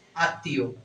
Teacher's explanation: আত্মীয়র ক্ষেত্রে এই মফলাটা থাকার কারণে এই তটা কি হবে, দুইবার উচ্চারণ হবে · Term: দ্বিত্ব উচ্চারণ